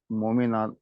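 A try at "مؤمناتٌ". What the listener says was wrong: मोमिनातुन। तुन, तुन यानी गोलता लगा देंगे।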